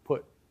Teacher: You also make a glottal stop, at least the way I just said it